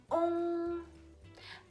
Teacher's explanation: Не просто он, что-то такое говорить, промотать а он. То есть губы должны быть напряжены, они должны сходиться вместе, как рыбка такая. И звук носовой, длинный и, можно сказать, узкий такой